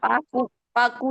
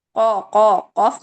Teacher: پاکو، پاکو نہیں، قو، قو، قوف موٹا ہے، اپنے مخرج کے لحاظ سے، مخارج کے لحاظ سے سب سے زیادہ قوت والا ہے، ٹھیک ہے. فوق، فوقکم الطور.